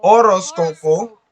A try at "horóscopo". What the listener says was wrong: Silent H. Horóscopo.